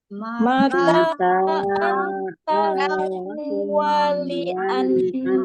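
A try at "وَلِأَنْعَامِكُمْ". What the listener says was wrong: nah, bedakan ya antara huruf alif dengan ain ya. Hamzah dan ain. Wali'an a. Wali'an'a ya. Beda ya.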